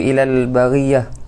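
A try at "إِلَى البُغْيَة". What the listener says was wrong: Bukan ilal baghiyah, tak ada. Buya. Ilal buya. Hati-hati. Baghiyah itu tak elok maknanya. Baghiyah itu tak elok ya nih.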